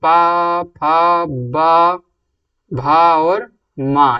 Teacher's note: फा का जो उच्चारण स्थान है ओष्ठ है